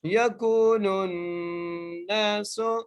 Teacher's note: کاف کو ہم 1 الف کی مقدار کھینچ کے پڑھ رہے ہیں کیونکہ یہاں پر واو مدہ کا قاعدہ لگ رہا ہے